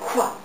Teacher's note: It says KW, so it also has the wind sound at the end.